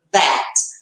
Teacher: Então, esse som de aqui vibra. Parece um Z, lembra sim o som do Z, só que a língua é entre os dentes. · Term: voiced